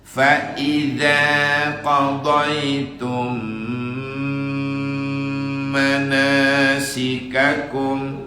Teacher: Mim mati ketemu mim, berdengung. Idgham mislain, idgham mimi. Ya, mim yang pertama masuk ke mim kedua. · Qadaytum ma itu mim mati ketemu mim. Harus didengungkan mim yang pertama masuk ke mim kedua, sehingga di mim kedua dikasih tasdid.